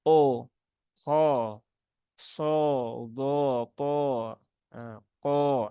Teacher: Sehingga banyak sekali di antara para pembaca dan para pembelajar karena bunyinya itu menyerupai bunyi vokal O. Kalau kita mengucapkan O, nah ini kan pasti mecucu ya, monyong.